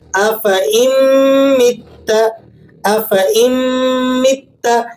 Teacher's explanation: اکثر لوگ کیا کرتے ہیں کہ یہاں پر حمزہ کو میم سے ملاتے نہیں ہیں بلکہ نون پڑھ دیتے ہیں درمیان میں، افإن مت، اس طرح سے پڑھیں گے، جبکہ یہ درست نہیں ہے۔ آپ نے حمزہ کو میم سے ملا دینا ہے اور نون جو ہے یہ بیچ میں سے سائلنٹ ہو جائے گا، لیکن اس کی جگہ پر غنہ آ جائے گا۔